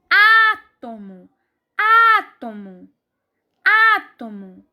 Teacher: está o antepenúltimo lugar a próxima palavra é átomo átomo átomo a sílaba mais forte é o a e mais uma vez antepenúltimo lugar